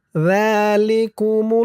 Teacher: জালিকুমুল্লাহু এক আলিফ টান খারা জবর আর জালের উচ্চারণটা নরম হবে জিহ্বার মাথা উপরের দাঁতের মাথার সাথে লাগবে